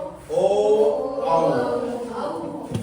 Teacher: ओ यानी कि कंठ और ओठ, कंठ और ओठ यानी कंठोष्ठ।